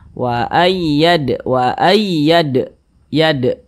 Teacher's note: Huruf dal termasuk salah satu huruf qalqalah. Kalau dia sukun kita pantulkan. Wa ayyad, yad, mantul seperti itu. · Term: qalqalah sughra